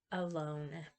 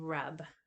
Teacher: The wedge and the schwa are allophones, and one is stressed and one is unstressed. The schwa is unstressed and the wedge is stressed.